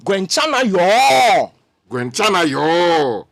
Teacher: It's the fourth tone. Okay. It comes down.